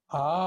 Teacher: ఆ అన్నప్పుడు నోరు తెరవటం, కంఠంలోంచి శబ్దం రావటం.